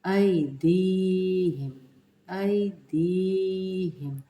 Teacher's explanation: لین کا قاعدہ ہے، یا ساکنہ سے پہلے الف، آئی دی، یہاں پہ یا مدہ کا قاعدہ لگ رہا ہے، اس کو ہم کھینچ کے پڑھیں گے